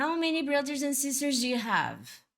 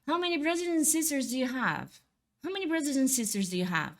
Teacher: Eu pronunciei o do, mas você quase não ouviu ele.